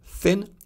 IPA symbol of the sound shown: θ